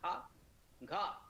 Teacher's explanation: कहीं ना कहीं हल्का सा हा आपको अनुभव होगा बोलते समय। ये महाप्राण ध्वनिया कहलाती है।